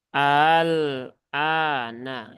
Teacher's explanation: meringankan Hamzah yang kedua yaitu dengan cara ditashil atau dimudahkan